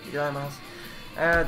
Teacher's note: you don't say the U on the end